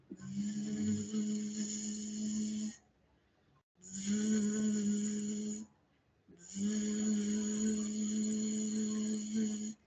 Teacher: la z lo hacemos como un zumbido